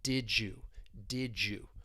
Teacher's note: did you ass similation is going to occur this is when we have two sounds they blend together to create a new sound in this case the D and Y they blend together and you get this J J sound it's almost like we're · the D and Y, they blend together and you get this j sound. It's almost like we're going to put that between the two words, and that allows us to connect them together. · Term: Assimilation